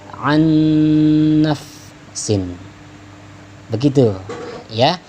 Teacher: ditahan dikit ya nak, idgham bi gunnah sehingga berdengung dia nantinya ya. Sekali lagi aku contohkan, an ya, an nafsin, tahan dikit, an nafsin, begitu ya, seolah-olah ada tasydidnya padahal tidak ada tasydidnya.